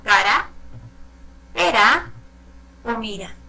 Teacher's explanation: Un sonido suave, no es como la R, que suena mucho más, es muy vibrante el sonido de la R.